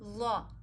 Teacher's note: ظا ہمیشہ موٹا پڑھا جاتا ہے